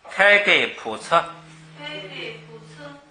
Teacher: 因为前边是普，后边弱化一下，弱化成测。